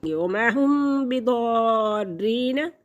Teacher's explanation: रूफ़ मद्दा के बाद मुशद्दद लफ्ज़ आ गया तो ये मद लाजिम कहलाएगी, ये मद लाजिम है। इस मद को 6 अलिफ के बराबर खींचेंगे।